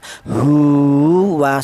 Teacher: ha ini dibaca panjang yaitu satu alif atau dua harakat atau dua ketukan